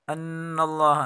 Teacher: ان اللہ، نون مشدد ہے، گناہ کے ساتھ پڑھیں گے. اللہ کے لام کو پر پڑھیں گے